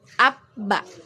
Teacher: Ada pertemuan ya, ada pertemuan di antara kedua bibir ya, dengan bibir atas dengan bibir bawah. Nah, jadi di sini bisa kita tarik kesimpulan bahwa makhraj dari huruf ba ini adalah kedua bibir.